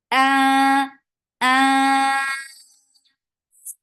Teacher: So when you are creating ikhfa, your hamza should not be ignored. The hamza has very sharp sound. The sound should be cut off very quickly.